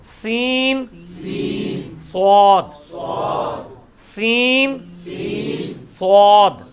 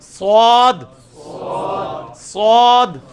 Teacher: اس میں بھی سیٹی کی آواز آئے گی, سواد سواد, سین سواد, سین سواد. سین کی آواز کو موٹا کیا, سواد بن گیا